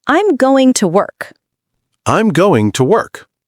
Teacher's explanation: Oh, the G disappears a bit.